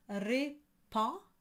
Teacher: So you have répand, and the D and the S are not pronounced.